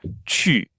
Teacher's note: the middle of my tongue makes contact with the roof of my mouth